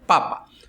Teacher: a sílaba tônica seria pa, a primeira, papa. Se fosse papá, tendría acento no último A.